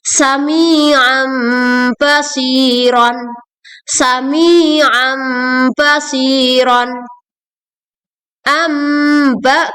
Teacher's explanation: menggantikan nun sukun menjadi mim sukun disertai gunnah atau dengung dengan panjang 2-3 harokat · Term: iqlab